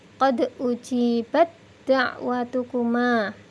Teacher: Tak bertemu dengan dal, taknya hilang, yang dibunyikan adalah suara dal yang ditasydid. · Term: idgham mutajanisain